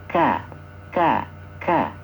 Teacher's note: ada udara yang terdengar ketika mengucapkan karena dia memiliki sifat Hames